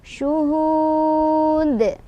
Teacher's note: Dan di ujung ada qalqalah kubro lagi karena ada huruf qalqalah yang sukunnya karena berhenti, yaitu huruf dal harokat dhammah tanwin karena berhenti jadi sukun. Jadilah dia dibaca ada pantulannya. Pantulannya lebih besar atau berkumandang.